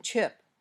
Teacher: your tongue pops open with a bit of a hissing sound